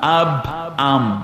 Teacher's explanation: বা আর মিম দুইটার উচ্চারণ হয় দুই ঠোঁট থেকে